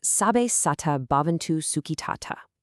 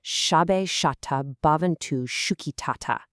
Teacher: Those hard S sounds soften to sh. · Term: distinct sh sound